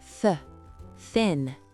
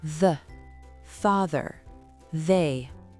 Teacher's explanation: Il a deux sons. Le premier est souffler. C'est uniquement de l'air qui passe. The th Le second est vibrant.